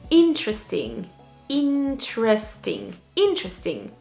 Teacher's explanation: Il y a vraiment 3 parties importantes. Et la première syllabe est la plus importante.